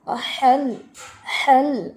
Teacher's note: ہا کا ہمس واضح کرنا ہے